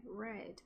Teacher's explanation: R é um aproximante retroflexa nas duas variedades, né? red.